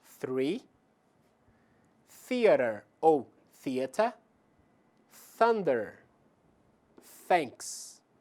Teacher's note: Nós temos voiceless, sem vibração das cordas vocais. A palavra three, theater ou theater, thunder, thanks e voiced, onde há vibração das cordas vocais.